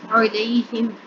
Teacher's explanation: اور آئین کی آواز حلق کے درمیان سے ادا کریں گے